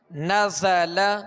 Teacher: زا کے اندر سیٹی کی آواز ہے، اس میں سختی ہے، تو اس کے اندر سختی اور سیٹی کی آواز جو ہے یہ اس کی خوبی ہے.